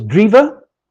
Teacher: at the first stage, the final alveolar nasal was dropped. The result was drive, and since final or unstressed schwa is often dropped too by means of processes of elision, at a later stage, the result was drive.